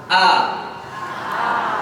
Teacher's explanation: Hamzah ini dia cirinya pita suara bergetar ketika diucapkan.